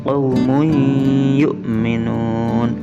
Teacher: Jadi tanwinnya tidak terbaca, dileburkan ke dalam huruf ya, dimasukkan ke dalam huruf ya. Qaumun yu'minun, berdengung selama dua harokat.